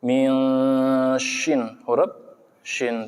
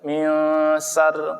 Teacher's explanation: Karena ini huruf shin, yaitu hurufnya menyebar, huruf shin.